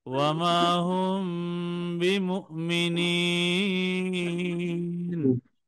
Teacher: বা আসায় মিম সাকিনকে নাকের বাসিতে গোপন করে গুন্নার সাথে পড়তে হবে।